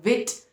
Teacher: व साउंड नहीं है जैसे W का था, इट्स व साउंड, वी साउंड